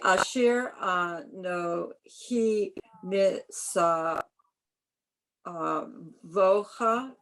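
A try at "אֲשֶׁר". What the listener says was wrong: It's not, there's no vowel there, even though it looks like it.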